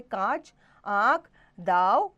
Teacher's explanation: अनुनासिक, इसका उच्चारण नाक और गले दोनों से होता है।